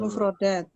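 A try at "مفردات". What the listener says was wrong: Mufradat. Kurang dat doang sih, sebentar dikit doang.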